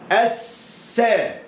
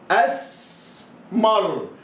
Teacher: هذه اللام هي لام شمسية، هي اللام التي تكتب ولا تنطق